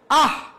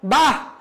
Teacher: বিস্ময় সূচক অব্যয় পদে বিসর্গ থাকলে হ উচ্চারিত হয়